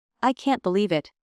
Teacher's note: A pitch drops. Voice gets softer and heavier